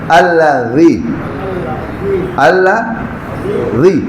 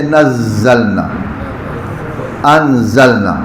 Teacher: زبان باہر نکلے تو ذال بن جاتی ہے، زبان اندر رہے تو زے ہے